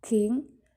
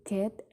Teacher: artikulator aktif adalah badan lidah dan artikulator pasifnya adalah langit-langit lunak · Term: pilar